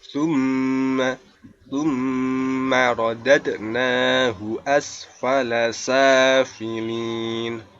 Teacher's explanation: Thumma ini bacaannya gunnah. Nah, cara membacanya yaitu dengan berdengung.